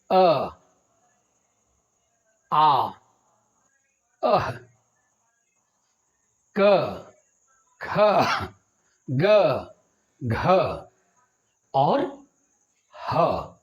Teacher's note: स्वर के अ स्वर वर्ण के आ और अयोगवाह के अह व्यंजन के कवर्ग और ह इनका उच्चारण कंठ या गला से होता है